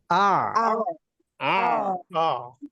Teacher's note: হামজা কিন্তু নরমাল, আইনটা শুধু গলায় চাপ হবে